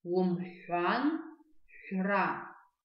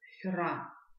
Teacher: Только при произношении звука Х, хра, мы округляем губы. То есть было у нас Х, и от звука Х мы стараемся округляем губы и получаем звук Х, хра.